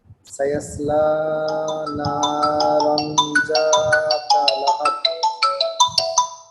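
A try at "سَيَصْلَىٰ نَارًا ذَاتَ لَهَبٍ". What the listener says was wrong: আচ্ছা, এখানে খেয়াল করেন, এখানে কিন্তু আপনি লাতে এক আলিফে অনেক টানছেন, এত টানলে কিন্তু দম রাখতে পারবেন না। সায়াসলা না রং যাতা লাহাব, একটু এই যে এক আলিফটাকে একটু ছোট করে পড়েন তো।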